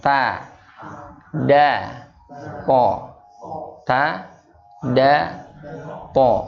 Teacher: Gusi gigi seri bagian atas. Ya, ujung lidah menyentuh gusi gigi seri bagian atas. · Jadi makhrajnya dia sama nih. Ketiga huruf ini sama tempatnya, yaitu di ujung lidah.